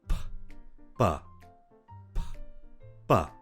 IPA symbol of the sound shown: p b